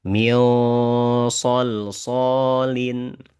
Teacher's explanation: ketika nun sukun bertemu shad, maka karena dia itu adalah huruf tebal, bacaannya ditebalkan. Jadi bukan mi bukan mil shol.